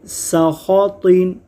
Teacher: خا اور طا دونوں حروف مصطلحہ ہیں۔ حروف مصطلحہ کو ہمیشہ پر یعنی موٹا پڑھتے ہیں۔ سین میں سیٹی کی آواز آتی ہے، اس کو ہم پڑھیں گے سخاطین۔